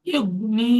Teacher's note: ইয়া মাদ্দাকে একালি পরিমাণ টেনে পড়তে হয়।